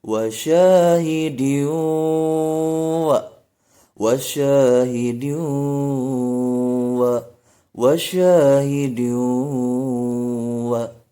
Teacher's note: Yang pertama adalah wa syahidin wa, idgham bigunah, tanwin in bertemu huruf waw. Wa syahidin wa, ditahan 2 harokat dan didengungkan.